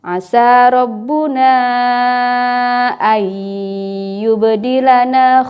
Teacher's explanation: Idgham bigunnah harus ditahan dulu ya, ditahan ayyub.